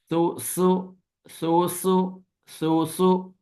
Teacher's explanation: सा नरमी से, सीन पे सीटी की आवाज